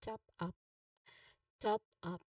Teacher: Top has a short o sound like in hot and a clear p sound like in up